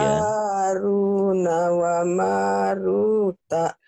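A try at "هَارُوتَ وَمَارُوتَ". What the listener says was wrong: bukan Haruna, Haruta ya.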